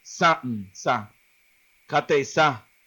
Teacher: san, S-A-N, la N es nasalizada, o sea que la N como que no se pronuncia completamente, sino se pronuncia así, sa, kate sa.